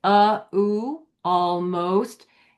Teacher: when we say almost, we just open our mouth for the ah before we do the L.